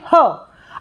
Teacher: ह का जो उच्चारण स्थान है वह स्वर तंत्री है